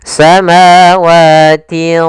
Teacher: Kalau izhar suara nun atau tanwinnya jelas, kalau idgham suara nun dan tanwinnya yaitu dimasukkan sehingga di sini disamarkan. Nah, karena huruf tha huruf tebal, huruf isti dan huruf idbaq, maka ikhfanya juga ditebalkan.